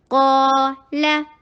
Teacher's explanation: कॉफ heavy हुरूफ में से है, अपने साथ आने वाले अलिफ को हैवी कर देता है। क और फतहा के लिए जबड़े को खोलिए और टू हरका लॉन्ग कीजिए।